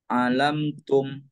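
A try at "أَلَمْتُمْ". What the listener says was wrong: Jadi kalau yang tadi pertama baca itu belum tasydid itu ya. Alam tum gitu ya. Tapi harus ditekan alam tum. Ada penekanan gitu ya.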